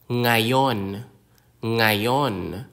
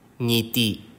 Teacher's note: The sound is continuous and produced from the back of the throat, similar to the English NG in sing, but it can be more challenging when placed at the beginning of a word, as in ngiti.